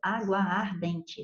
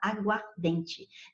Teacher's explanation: Mas na aguardente só tem um A. Então, houve uma alteração fonética, por menor que seja, porque você não pronuncia dois As · porque você não pronuncia dois As, ó, água ardente, você só fala aguardente.